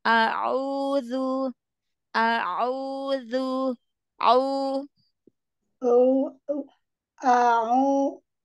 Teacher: huruf ainnya ee fokuskan lagi dari tengah-tenggerokan